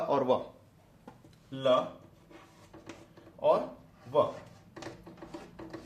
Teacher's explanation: य जो है तालव्य से निकलता है र जो है मुर्धन्य से निकलता है ल जो है दंत से निकलता है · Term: अंतस्थ व्यंजन